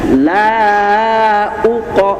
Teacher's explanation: la-nya 2 ayunan, uqo-nya tebal ya